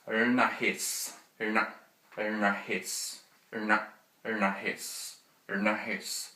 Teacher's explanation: Okay, and down here we have the retroflex nasal, which is like an N sound with the tongue curled back